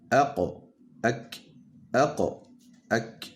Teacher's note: pour sortir le kaf, le fond de la langue doit être en contact avec l'intersection du palais mou et du palais dur. Donc en fait, la lettre kaf se situe un peu au-dessus du qaf, comme vous avez pu le constater avec le mouvement de la langue.